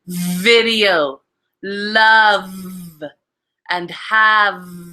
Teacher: Now the V is voiced. So you still have your teeth. It's kind of vibrating on your lip here.